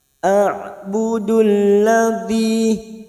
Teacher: budul masuk pada alif lam samsiah atau idgham syamsiah